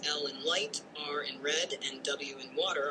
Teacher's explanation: in red and W in water are approximates in these cases the air flows smoothly through the constriction created by the Tongue or lips without causing friction so the statement is valid because approximates are indeed frictionless continu